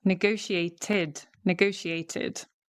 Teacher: Because we've got the T before the ED, right? The T, so then we add the ID, the extra syllable.